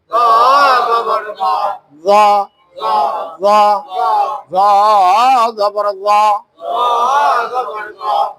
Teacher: জিহ্বার গোড়া, জিহ্বার মাঝখান, জিহ্বার আগা সম্পূর্ণ উপরে উঠাই দিবেন, উপরের দাঁতের আগার সঙ্গে লাগাই দিবেন।